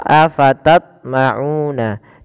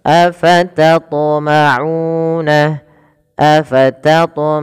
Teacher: huruf th di sini wajib kita pantulkan karena ia termasuk daripada ketika huruf th berharakat sukun maka ia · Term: Qalqalah